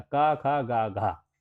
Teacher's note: यहां पर ये कंठ से उच्चारित होंगे